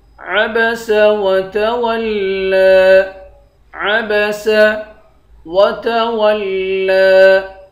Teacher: لام پر کھڑا زبر ہے، اس کو ایک الف کی مقدار کھینچ کر پڑھیں گے